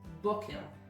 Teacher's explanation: in the word boker, it is the second from last syllable that is emphasized